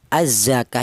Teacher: Jadi ka ya jadi azzakah ya ka dibaca madrid di sukun. Alasannya ada mad thobi'i berjumpa dengan huruf yang diwakafkan